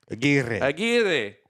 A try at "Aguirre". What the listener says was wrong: Gotta roll the R's.